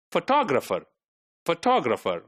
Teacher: photographer one two three four the second one is made prominent